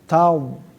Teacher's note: lidah gigirnya bertemu dengan geraham dan terangkat ke atas